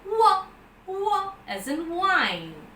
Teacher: So in the articulation of were, as we saw some time back, the lips are closely rounded. · Further, it is, as I said, just like the ya, it is the soft palate is raised, it's a voice sound, and the vocal cords are vibrating, and the three-term label, in fact, it's a voiced labio-velar semi-vowel. Labio because your lips are used, they're rounded, it's a voice, vocal cords are vibrating, and semi-vowel.